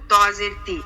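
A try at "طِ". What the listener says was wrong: তোয়া না তা, এটা তো তা হবে, তোয়া না।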